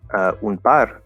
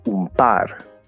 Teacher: you can say un par with an M sound instead of an N because the N and M sound similar, and the P is right there where the M is.